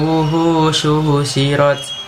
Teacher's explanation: Wuhu dinamakan hukum bacaan mad tabi'i karena waw sukun didahului harakat dhamma atau waw sukun terletak setelah harakat dhamma. Cara membacanya harus panjang.